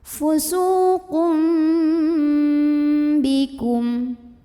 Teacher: Karena ada tanwin dhammah yang ketemu sama huruf ba, maka tanwin dhammah ini yang bunyinya an, bunyi nun sukun, diganti jadi bunyi mim sukun, jadi sambil ada dengungannya, jadi tahan dulu. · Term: iklab